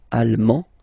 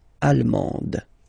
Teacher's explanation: you don't pronounce the final D, but then you pronounce it here for the feminine form